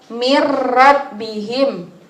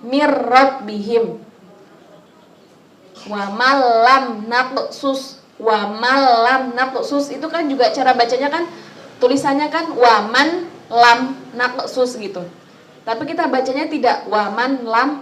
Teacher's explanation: nun mati atau tanwin bertemu dengan dua huruf apa hurufnya ibu-ibu lam dan ro itu cara membacanya memasukkan tapi tidak mendengung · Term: idgham bilagunnah